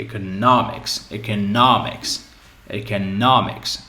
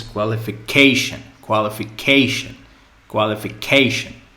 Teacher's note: in these cases the stress is just before the ending